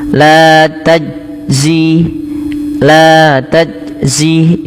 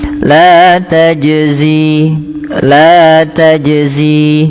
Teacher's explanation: huruf jim ini dibaca dengan memantul. Nah, istilah memantul di dalam bahasa Arab karena sifat makhrajnya ada mantulannya yaitu kita namakan dengan qalqala. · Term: qalqalah